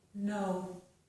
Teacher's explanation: we use our tongue tip and the upper gum ridge. So we are putting the tongue on the ridge behind our teeth, and it is touching, it pushes against the ridge, and we stop the air from coming out that way.